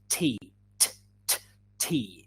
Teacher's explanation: Yeah, we don't say tea, t, t, tea. Yeah, in English there is a bigger explosion.